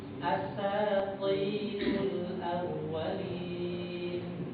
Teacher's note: Pangkal lidahnya diangkat jadi suaranya tebal.